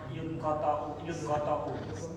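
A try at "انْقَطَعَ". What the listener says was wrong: Kok jadi yu? I. Nah, kok u belakangnya?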